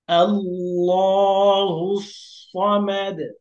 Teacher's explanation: সদ হল মোটা হরফ। এজন্য সদটাকে আরেকটু মোটা করে বলতে হবে।